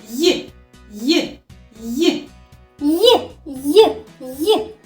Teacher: Перешкодою при вимові є язик і піднебіння. Значить, звук й є приголосним звуком.